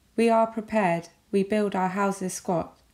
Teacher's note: five stressed syllables and five unstressed syllables and they alternate stressed and unstressed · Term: iambic pentameter